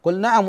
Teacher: لا تدغم اللام الساكنه في النون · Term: اظهار